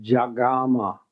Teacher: So the vowels have changed. A and O have both become ah.